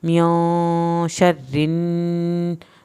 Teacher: नून साकिन पे आपने देर लगानी है